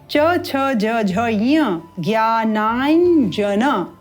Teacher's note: पंचम वर्ण है ञ जो तालू से उच्चारित किया जाता है